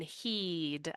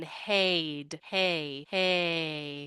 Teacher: our tongue is still near the front of her mouth but it lowers just a little bit